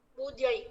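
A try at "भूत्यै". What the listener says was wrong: தா சொல்றோமா, அந்த தா சொல்லணும். பூத்யை.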